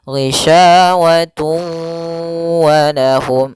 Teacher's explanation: tanwinnya dimasukkan ke huruf waw kemudian ditahan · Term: idgham naqis